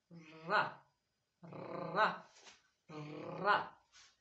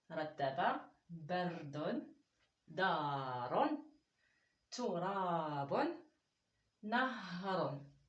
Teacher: On va parler de la lettre d'aujourd'hui qui va être une lettre qui ne s'attache pas à la fin, qui fait partie des lettres radines, qui descend légèrement de la ligne de l'écriture, qu'il faut la rouler légèrement aussi au bout de la langue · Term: la lettre ra